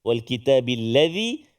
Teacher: Jadi kena hati-hati zal yang kecil itu zal, macam si dia zal, hujung lidah keluar sikit.